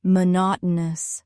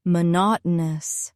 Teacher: Mo not o news. Stress is on the second syllable. Mo not o news.